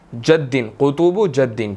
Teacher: دال last letter ہے، تو یہاں پر ہم نے قلقلہ کرنا ہے، ہلا کر پڑھنا ہے، ٹھیک ہے۔ اور را موٹی ہے، کھڑی زبر بھی آ گئی، تو اس کو ہم نے 1 to 2 سیکنڈز کھینچ کر پڑھنا ہے، ٹھیک ہے، تھوڑا سا لمبا کریں گے صرف۔